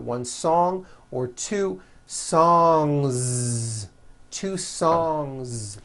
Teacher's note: Song ends with a voiced NG sound. So if you make it plural, don't forget to add a voiced Z ending.